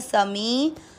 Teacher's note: मी में बड़ी ई की मात्रा लंबा खींचना है